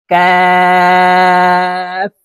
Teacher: কাফ হরফ জিহ্বার গোড়া থেকে একটু আগে বাড়িয়ে উচ্চারণ করব